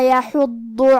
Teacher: کیونکہ ضاد حروف تفخیم میں سے ہے، تو ہم یہ حرف کو بھاری آواز میں اور منہ پھلا کے پڑھیں گے، اور کیونکہ ضاد پہ تشدید ہے، لہذا ہمیں یہ حرف کو 2 حرف کے برابر بھی پڑھنا ہے